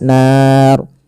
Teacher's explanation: ro di sini kita hukumi dengan ro tafkhim. Ro yang tebal tidak boleh dibaca dengan ro tipis. Kenapa? Karena dia adanya huruf ro yang disukunkan sebelumnya fathah.